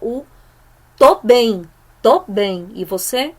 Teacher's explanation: aquele tô é uma redução fonética de estou